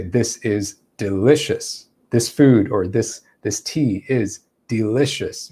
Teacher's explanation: We're using a downward inflection.